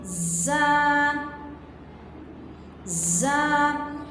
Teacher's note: ہمارا یہ زبان کی جو نوک ہے، وہ نیچے والے دانتوں سے ٹچ ہوتی ہے · زا میں سیٹی اور سختی کی صفت پائی جاتی ہے۔